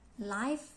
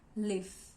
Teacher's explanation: Labiodental comes from labia, lower lips, and dental is the upper teeth, this one. We use labiodental when we want to produce voiceless sound like F and voice sound like v.